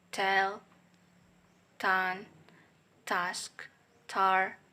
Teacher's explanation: voiceless alveolar stop sound ta